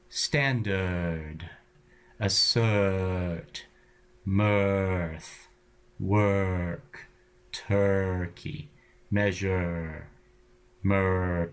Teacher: the r exerts a kind of gravity on the vowel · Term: angry schwa